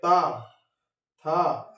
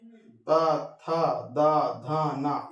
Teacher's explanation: ये जीभ जो है दांत से टकरा रहे हैं , ठीक है, तालुका हमारी जो है दांत से टकरा रही